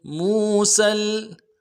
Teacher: سین کو لام کے ساتھ ملائیں گے، سین کی سیٹی باریک ہوگی۔